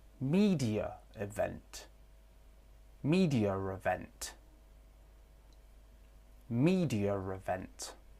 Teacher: With intrusive R, we can hear media event.